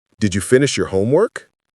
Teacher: Voice goes up on homework.